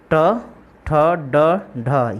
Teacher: हिंदी में आप देख सकते हैं यहाँ पर ट ठ ड ढ, ये आपका रेट्रोफ्लेक्स जो है साउंड है। इसमें जीभ का अग्र हिस्सा जो है थोड़ा फोल्ड होता है और आपके हार्ड पैलेट पर जाकर जो है स्पर्श करता है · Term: रेट्रोफ्लेक्स साउंड